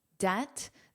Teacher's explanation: Debt, there's no B. It's there for spelling, but not for pronunciation. So it's a silent letter, debt.